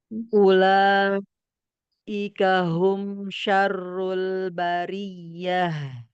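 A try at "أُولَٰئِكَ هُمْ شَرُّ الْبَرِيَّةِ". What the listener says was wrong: Bagus, tapi fathahnya tipiskan lagi sedikit. Ulaika. La dengan kaf.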